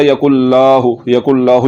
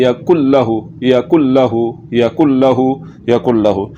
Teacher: लाम के ऊपर ज़बर है तो ज़बर को लंबा नहीं करना। अगर आपने इसको पढ़ लिया यकुल्लाहु, ज़बर को लंबा कर दिया तो फिर ये अलिफ की आवाज़ निकल रही है।